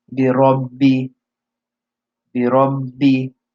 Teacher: the last ba has a shadda, which means that it's like you're saying 2 bas, one with sukoon and one with a kasra. Bi rabbi, bi rabbi, you're holding it.